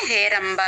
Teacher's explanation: అది బ కి మహాప్రాణం లేదు చాలా మంది అక్కడ చెప్తారు పొరపాటుని చెప్తూ ఉంటారు బ కి మహాప్రాణం లేదండి